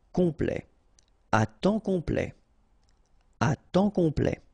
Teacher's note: OM is nasal here, just because you get your P after that, so it's on, complet.